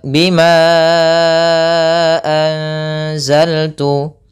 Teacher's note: ditahan dulu suara eng-nya atau suara tadi samarannya ke sepanjang 2 harokat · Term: ikhfa